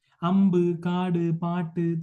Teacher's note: ഒടുവിൽ ഉച്ചരിക്കപ്പെടുന്ന കേന്ദ്രീകൃത സ്വരത്തിന് മലയാളത്തിൽ തമിഴിൽ ഉള്ളതിനെ അപേക്ഷിച്ച് കുറച്ചുകൂടി തുറന്നുള്ള ഒരു നില ഉണ്ട്